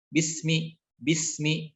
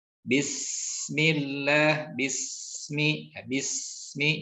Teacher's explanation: Kemudian nanti ada sifat sopir sebetulnya, dan ketiga sifat ini yang kemudian menjadi hal yang dominan pada huruf sin. Nah, rokhawah yang harus kemudian kita praktekkan itu adalah mengalirnya suara dengan tidak menjadikan sin sukun ini langsung masuk kepada huruf yang di depannya